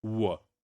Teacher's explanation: the English sound w, W sound, which is articulated from lips, bilabial sound, but the velar is also involved because your back of the tongue is raising towards the velar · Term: secondary articulation